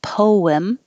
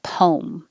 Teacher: And poem can be 2 syllables, poem, or 1 syllable, poem. Both are fine.